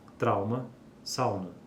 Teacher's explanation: quando o ditongo decrescente seguido de consoante nasal termina em u a nasalização não ocorre em nenhum dialeto